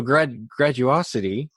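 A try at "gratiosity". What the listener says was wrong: Gradiosity, with a T. So it's a compilation of the word gratitude. This will make it easier. Gratitude and generosity.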